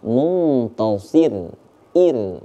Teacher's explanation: kalau yang Muntasir dibaca tipis karena sebelum huruf ro itu terdapat huruf berbaris kasrah